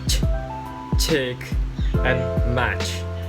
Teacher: The English fricate sounds are ch, chick, and match. Air is blocked with tongue just beyond the alveolar ridge, post-alveolar, then released as a fricative.